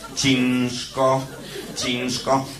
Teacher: ż, ale przechodzące w bezdźwięczną spółgłoskę szczelinową sz, a więc ż, ale bezgłośny